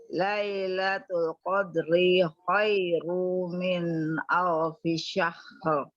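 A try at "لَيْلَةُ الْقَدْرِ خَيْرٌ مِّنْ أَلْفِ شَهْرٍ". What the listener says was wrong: Fokus kepada kodnya agar kita ri-nya pendek. Lailatul Qadri khairum langsung. Ri-nya pendek saja. Qad. Fokus pada kod dengan khoi. Qadri khairum. Untuk menjaga ri yang ini. Karena memang kesulitan orang Indonesia ini atau orang ajam, kita terbawa kepada model langgam tertentu sehingga kita memasukkan hukum-hukum ini ke dalam langgam, mengutamakan langgam.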